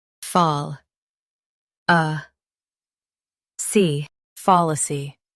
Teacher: Stress fall and keep uh soft in fallacy.